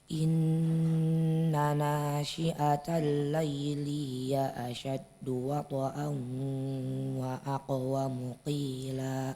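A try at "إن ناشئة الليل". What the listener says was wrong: Lihat, inna nashi'atal layli. Jangan disakaliguskan layli, lay. Perlahan aja, lamnya dijelaskan dulu. Selesaikan dulu lamnya, baru masuk ke ya-nya. Layli, layli, jangan lay.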